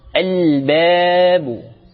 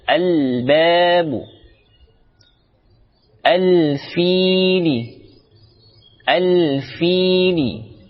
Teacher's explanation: Alif lam bertemu huruf fa, dibaca jelas alif lamnya. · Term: alif lam qamariyah